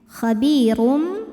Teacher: Karena ada tanwin dhammah yang menghadapi huruf ba, maka bunyi tanwin diganti bunyi mim sukun jadi m ya. Khabirum disertai dengung. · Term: iqlab